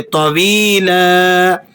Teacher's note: جب آپ اس پر سٹاپ کریں گے، وقف کر کے اسے پڑھیں گے تو آپ اسے کھینچ کر پڑھیں گے